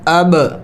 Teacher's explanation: با حروف قلقلہ میں سے ہے تو اس کے اوپر قلقلہ کرنا ہے